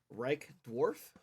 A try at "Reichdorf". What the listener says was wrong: Dorf. Not dwarf. Dorf. I know it's hard, but you're German.